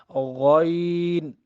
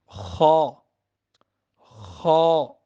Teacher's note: غین اور جو خا ہیں یہ حلق کے اوپر والے حصے سے، جو حلق کے اوپر والے، غین، یہ آپ پڑھیں گے نا زبان اوپر لگائیں گے تو آپ کو آئیڈیا ہوگا۔